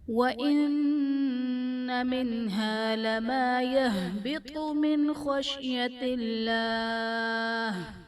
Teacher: خشیت اللہ میں اسم جلالت اللہ عز و جل کے لام سے پہلے زیر ہے تو یہاں پر اسم جلالت اللہ عز و جل کے لام کو باریک پڑھا جائے گا